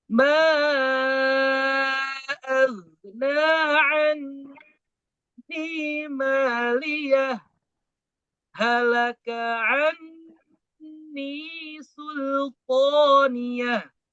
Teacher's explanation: saktah dulu, berhenti sejenak, tidak mengambil napas, kemudian melanjutkan bacaan.